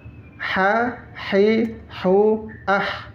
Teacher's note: Dia dia ada di makhraj tenggorokan tengah.